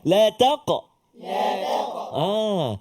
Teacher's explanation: Hati-hati pada kalimah taqrabu. Huruf qaf sebelum dia huruf ta. Maka jangan kita terkesan dengan tebal huruf qaf, isti'la pada huruf qaf. Ta tu jadi tebal.